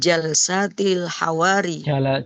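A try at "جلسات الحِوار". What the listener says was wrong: hiwari. Hiwari. Haknya di kasrah. Hiwari.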